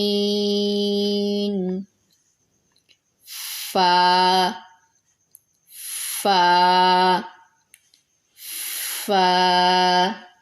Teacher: نیچے والے ہونٹ کا اندرونی حصہ اور سامنے والے اوپر کے 2 دانتوں کا کنارہ، اس سے فا ادا ہوتا ہے